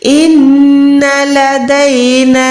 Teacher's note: नून मुशद्दद है, हर हाल में गुन्ना होगा। इन गुन्ने का क्या मतलब है? नाक से आवाज जाती है।